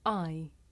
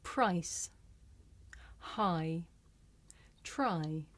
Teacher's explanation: this is a diphthong a double vowel sound the shape the mouth makes changes from the beginning of the sound to the end it's pronounced i did you notice how the shape of my